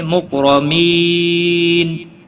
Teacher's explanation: را زبر کی وجہ سے پور پڑھا جائے گا۔ لی یا مدہ ہے، ایک الف کے برابر کھینچ کر پڑھیں گے۔